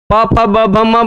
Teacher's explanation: एक होठ से आप पा बोल के देखिए, पा नहीं बोल पाएंगे। ठीक है, तो प फ ब भ म दोनों ओष्ठ लगते हैं, इसलिए ओष्ठऊ